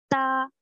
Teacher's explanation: ता ज़बान की नोक ऊपर के सामने वाले दो बड़े दांतों की जड़ में लगेगी